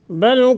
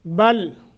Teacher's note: لام ساکن ہے، اس کو قلقلہ نہ ہونے پائے اور نہ ہی متحرک ہو، بل ساکن ہی رہے۔